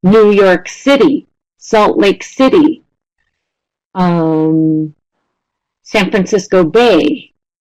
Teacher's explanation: So basically the rule is the last word of the proper noun phrase is stressed